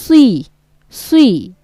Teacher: এটা আবার সরাসরি কিন্তু সিনের মতো সি হবে না, সজ্জের সি এরকমটা হবে না, সি। সজ্জে সি বলবেন আপনি, কিন্তু মুখটা একটু গোল করে